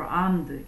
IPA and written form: ɑ:rmd (armed)